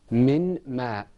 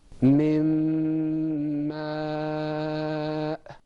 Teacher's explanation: the ghunna lengthens the sound a little bit